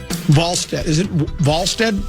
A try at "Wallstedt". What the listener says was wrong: It's spelled like wall, but it's pronounced like Vol.